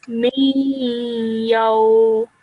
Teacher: you don't actually produce that full noon sound. Okay, you just produce a slight nasal sound in your nose. Okay, so you wouldn't really press your teeth together to produce that noon sound.